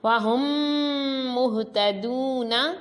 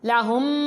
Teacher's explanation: میم ساکن کے بعد میم ہے تو غنہ کیا۔ لَهُمْ میم ساکن کے بعد میم ہے تو غنہ کر کے پڑھا۔ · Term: ادغام شفوی